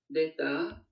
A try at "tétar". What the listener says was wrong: Attention à, par exemple, la prononciation ici. C'est pas détar, c'est tétar. Tétar. C'est un ta. Ta d'embouté. Ouais, tétar. Moi, j'ai entendu des, parce qu'on a un peu l'habitude avec le ta d'embouté de le dire des. Mais en fait, si vraiment on veut dire les choses précisément...